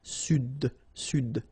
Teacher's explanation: L'Amérique du Sud. Here you should pronounce the D.